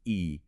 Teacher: your tongue is high up in your mouth and that results in a low F1 frequency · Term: high vowel